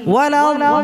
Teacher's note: अद्दाल्लीन में यहाँ दाद की साथ अलिफ भी मोटा पड़ा जाएगा।